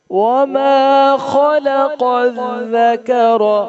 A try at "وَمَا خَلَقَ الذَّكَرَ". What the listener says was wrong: ذکر نہیں پڑھنا، خلق ذکر نہیں پڑھنا. قاف کو موٹا بھی پڑھنا ہے.